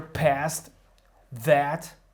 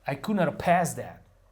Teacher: And here, past that, we lose the TH